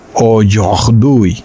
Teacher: tuve que hacer un sonido gutural. En el español no existe